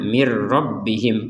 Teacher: Kalau kita menggabungkan nun sukunnya kepada ro, maka nun sukunnya dimasukkan kepada huruf ro sehingga tidak dibaca min lagi, tapi berganti pembacaannya dengan mir